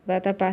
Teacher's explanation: Vatapá termina em A, né? E tem a sílaba mais forte no pá final, né? Então, eu acentuo.